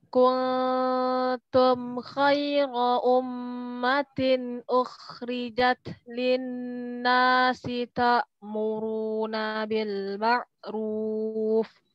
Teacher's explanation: Kuntum itu nunnya netral, enggak boleh manyun. Enggak boleh kuntum tapi kuntum.